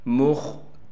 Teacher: میم کو خا سے ملائیں گے، خا کو موٹا کر کے پڑھیں گے